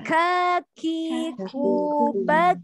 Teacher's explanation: Kaf punya sifat ada udara yang ngalir. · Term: hamas